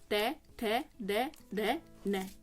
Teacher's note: दांत से आपका पूरा का पूरा त वर्ग है